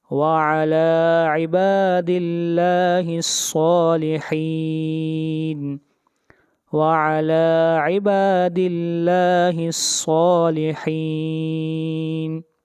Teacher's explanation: با کو کھینچ کر پڑھیں گے ایک الف کے برابر، دل لفظ اللہ کو باریک پڑھا جائے گا، لفظ اللہ سے پہلے زیر ہے، صاد کو موٹا پڑھیں گے، صاد حروف استعلاء میں سے ہے